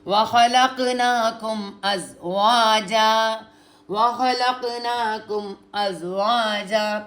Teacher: वाव के साथ अलिफ मद्दा भी है, देखें, वाह लंबा करना है थोड़ा सा